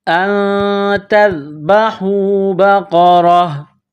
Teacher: گولتا ہے نقطوں والی، یہاں پر دو زبر تنوین ہے تو جب یہاں سٹاپ کریں گے، وقف کریں گے تو گولتا کو ہا سے تبدیل کریں گے